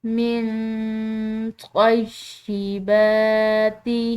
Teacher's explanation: نون ساکن کے بعد طا ہے، یہ بھی حروف اخفا کا ایک حرف ہے تو اس کو ہم نے مخفی کر کے پڑھنا ہے۔ من طیبات، با کے اوپر کھڑی زبر کی وجہ سے اس کو ہم کھنچاؤ دیں گے، ایک الف کے برابر لمبا ادا کریں گے، ٹھیک ہے۔